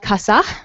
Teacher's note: when you have a word final S, sometimes it'll be aspirated and pronounced as an H, and sometimes it'll be fully deleted in many dialects of Spanish.